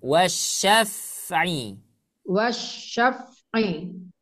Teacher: Nah hati-hati ya di huruf fa-nya jangan mantul